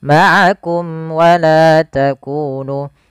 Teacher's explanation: mim mati bertemu dengan wau yaitu izhar syafawi yang di mana harus dibaca dengan jelas suara mimnya dan tidak boleh ditahan